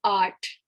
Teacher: the aa is for the ah sound, right? But the th is t, t. It's not th, it's not th, it's not the, it's t.